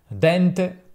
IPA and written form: dɛnˈte (dente)